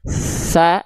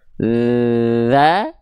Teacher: huruf tsa dan dzal dilafalkan sama, cuman beda dari segi aliran nafas